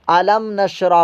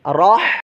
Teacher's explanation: ہا کی آواز نکلے، سانس باہر حلق سے آئی